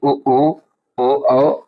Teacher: जिन स्वरों के उच्चारण में होंठ वृत्तमुखी या गोलाकार हो जाए